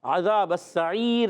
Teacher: عین حلق کے درمیان والے حصے سے